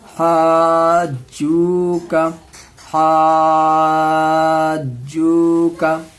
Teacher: یہاں پر بھی الف مدہ کے بعد جیم میں تشدید آ رہا ہے، تو اس کو بھی 5 الف کے برابر کھینچیں گے. یہ مد لازم ہے.